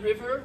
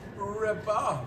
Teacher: So instead of the V sound, you're going to hear a B sound. Not river, but ribba.